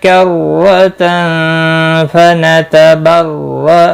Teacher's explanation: रो ज़बर की वजह से पूर पढ़ा जाएगा। तनवीन के बाद हुरूफ इख्फा का फा इख्फा हकीकी होगा।